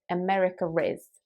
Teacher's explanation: they were almost add an r sound at the end of america even though it's not there